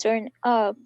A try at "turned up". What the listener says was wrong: Turned up. Try to put these two together. Turned up. Turned up. Turned up. Yeah, you need to link. You have to link the consonant sound to the vowel sound of the word that comes next. So here we have turned and here we have up.